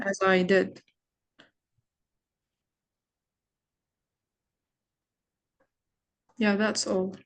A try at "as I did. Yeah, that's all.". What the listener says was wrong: Great, but the tone of your voice is I feel like I'm gonna sleep. What is the enthusiasm in your intonation?